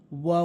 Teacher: এরপর হচ্ছে ওয়াও, ওয়াও, মুখের খালি জায়গা থেকে, কোনো জায়গা নেই, জিব্বার আগা গোড়া, দাঁত আগা গোড়া কিচ্ছু নেই, শুধু মুখের খালি জায়গা, কোনো জায়গা নেই।